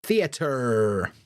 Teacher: theater or Center we're not having that we're having e and we're going to pronounce that R every single time